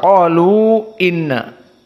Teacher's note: mad jaiz munfasil al-isba', dibaca dalam keadaan 6 harokah